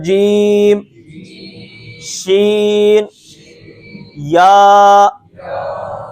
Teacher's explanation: زبان کا جو درمیان کا حصہ ہے یہ اوپر والے تالو کے ساتھ لگتا ہے